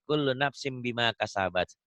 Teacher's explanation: Kan kalau nafsin kan N. Nun mati, nun matinya berubah menjadi bunyi mim mati